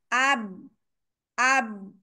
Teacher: मेरे होठ दो बिल्कुल बंद है सील्ड हो गए